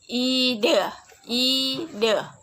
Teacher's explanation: ciri-ciri tengah depan tak bulat.